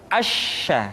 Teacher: dikeluarkan dengan cara mengangkat Tengah lidah kita ke langit-langit